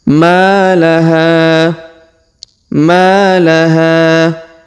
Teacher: Huruf ha kita panjangkan 2 harokat karena di depannya terdapat alif ya.